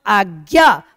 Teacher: ये भी क्या है बलाघात या स्वरा घात है और आज्ञा आ की अपेक्षा ज्ञा पे ज्यादा बल दे रहे हैं